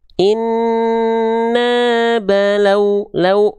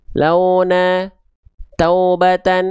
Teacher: pastikan vokal yang keluar ketika melafalkan inna balawnahum itu adalah vokal u ya